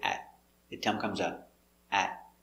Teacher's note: The T in at is a stop T.